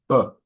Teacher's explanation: That's a much louder sound, so that's voiced.